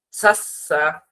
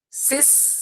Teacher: সা এর মধ্যে একেবারে পাতলা, সা এর মধ্যে মুখের দাঁত এবং জিহ্বার মাঝখান দিয়ে বাতাস বের হবে।